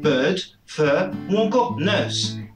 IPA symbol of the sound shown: ɜ: